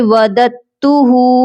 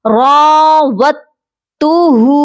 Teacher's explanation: جب بھی ہم ساکن اور مشدد حرف کو اکٹھا دیکھتے ہیں، ہم ساکن کو چھوڑ دیتے ہیں، ہم نے مشدد حرف کو پڑھنا ہوتا ہے، تو یہاں پر ہم نے واو کو تا مشدد کے ساتھ ملانا ہے، دال کو ہم چھوڑ دیں گے، یہ پڑھا جائے گا راوتُّهُ۔